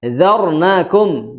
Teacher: Di situ ada ro yang sukun. Tebal atau tipis bacanya? Tebal.